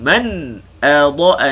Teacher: Man adha, di sini izhar halqi. Man adha nipis, dad baca tebal. Jangan muncung ketika kita sebut dad berbaris atas.